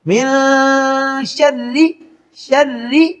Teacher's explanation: را کے نیچے جب زیر ہو تو را باریک پڑھا جاتا ہے